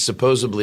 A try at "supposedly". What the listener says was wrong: Supposedly. There's no B in supposedly. Supposedly. Yes, supposedly General E. Lee.